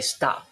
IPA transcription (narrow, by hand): stɑpʰ